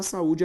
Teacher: perceber que a sílaba tônica também é a penúltima ou seja uma palavra paroxítona